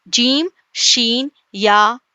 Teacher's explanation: چلیے یہ ہے جیم، جیم کسے کہتے ہیں، جیم وسط زبان اور بالمقابل اوپر کا تالو، یاد رکھیے آسان زبان میں زبان کا بیچ کا حصہ، یہ زبان بالکل زبان، اور بالمقابل اوپر کا تالو، زبان کا درمیانی حصہ اور اوپر کا تالو مل کر جیم ادا ہوتا ہے